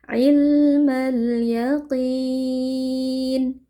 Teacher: Huruf qaf huruf tebal kita baca dengan mengangkat pangkal lidah ya, jadi qaf kasroh itu tidak menjadi tipis ya, jadi tidak boleh dibaca yakin tapi yaqi, tetap tebal, hanya saja kadar ketebalannya itu berkurang dibandingkan ketika kondisinya fathah atau dhammah.